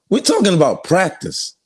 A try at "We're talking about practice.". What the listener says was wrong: You got to get more emphasis on practice.